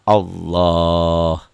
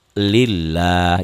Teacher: Jadi kalau tebal bunyi O kalau tipis bunyi a